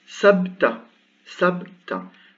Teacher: Donc ici, je prononce sabta et je ne mets pas de voyelle. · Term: soukoun